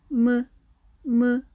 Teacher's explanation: 미음은 무라고 말을 할때 입술과 입술이 맞다.